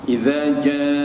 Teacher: huruf mad bertemu dengan hamzah dalam satu kalimah. Panjang bacaannya ialah 5 harakat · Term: mad wajib muttasil